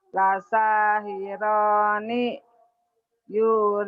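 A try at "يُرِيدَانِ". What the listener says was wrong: Danya panjang. Danya panjang. Lasahirani yuridani.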